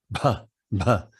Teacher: Bas, that BH is pronounced like buh, buh. You aspirate the B. We don't do that in English, but it's a basic consonant in the Indic languages